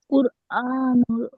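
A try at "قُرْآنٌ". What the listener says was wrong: নুন শেষে তানবিন আছে, কুরআনুন।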